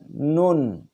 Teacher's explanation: Tempat keluarnya ujung lidah bertemu bawah sedikit makhraj lam dan arah gusi atas. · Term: huruf nun